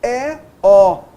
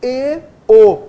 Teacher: E, O, nós abrimos mais os lábios, E, O, nós fechamos mais os lábios. Isso é o timbre aberto, o timbre fechado.